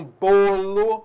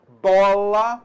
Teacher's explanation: bolo, o timbre é fechado. Bola, o timbre é aberto. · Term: timbre aberto